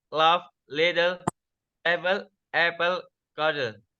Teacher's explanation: It is produced by allowing air to flow around the sides of the tongue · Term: lateral approximant